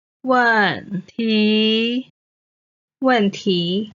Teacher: 问 is the fourth tone. 题 is the second tone.